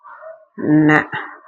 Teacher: பாருங்க, இது மயங்குலிகள்னு கூட நம்ம சொல்லுவோம். நாக்கின் நுனி மேல்வாய் பற்களுக்கு மேல் உள்ள மேடான பகுதியாக முன்னன்னத்தை தொட்டால் ந பிறக்கும். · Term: டன்னகரம்